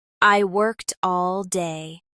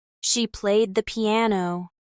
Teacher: We also need to focus on ed endings in regular verbs. In English, ed can be pronounced in 3 different ways depending on the last sound of the verb, as T like in worked, as D like in played, and as I'd like in wanted.